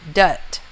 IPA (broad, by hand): dʌt